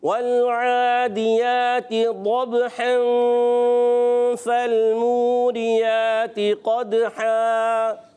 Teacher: تنوین کے بعد آگے فا آ رہا ہے تو اخفا کا قاعدہ ہو جائے گا